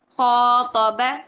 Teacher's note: खौ 2 हरकत खींचेंगे, जबकि क और बा एक हरकत ही रहेंगे।